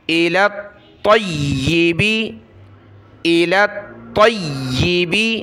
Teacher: طا کے ساتھ ملایا طا کو یا کے ساتھ إِلَى الطَّيِّبِ طا اور یا دونوں کے اوپر تشدید ہے تو دونوں کو سختی کے ساتھ پڑھنا ہے